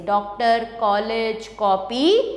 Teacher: अगर बिंदु नहीं होगा सिर्फ चंद्र होगा तो उसका उच्चारण आ और औ के मध्य की ध्वनि से होगा